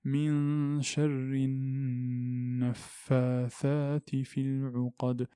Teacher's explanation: Ici, nous avons la nasalisation. Il y a le nun, donc nasalité, le son qui sort du nez.